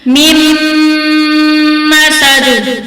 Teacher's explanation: میم کو میم کے ساتھ پڑھیں گے، ملا کر غنہ کر کے پڑھیں گے